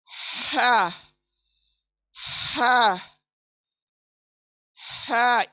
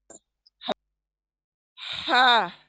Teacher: ये वसत हलक से अदा होता है। वसत हलक यानी हलक के बीच का हिस्सा, सेंटर ऑफ द थ्रोट। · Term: हलकी हुरूफ